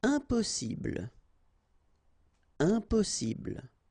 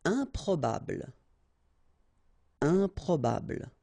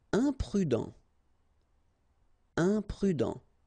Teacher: when you add this em at the beginning of all the words, you will get the nasal sound un. Okay, you don't pronounce the m, but it goes like un.